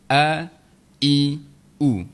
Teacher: dia keluar di bahagian pangkal kerongkong bawah sekali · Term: huruf Hamzah